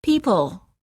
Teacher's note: Don't round your lips when you're saying the L. This will weaken it and make it sound more like a W.